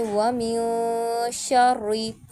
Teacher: ہم نون کی آواز کو چھپا دیں گے ناک میں 2 سیکنڈ کے لیے